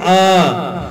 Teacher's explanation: अ के अंदर पूरा मुंह खुला है, गले से बोला जाता है। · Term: कंठ